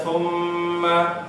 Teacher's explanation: nun dan mim bertasydid, bacaannya harus ditahannya sesuai ya